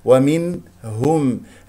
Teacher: ومنهم نسمع صوت النون المظهره الهاء مضمومه نضم الشفتين فيها ومنهم الهاء من اقصى الحلق باهتزاز الاوتار الصوتيه ميم من ومنهم مع ميم من ادغام بغن بمقدار حركتين لان